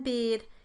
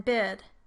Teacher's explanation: The high front vowels are the vowels e, as in bead, and ih, as in bid.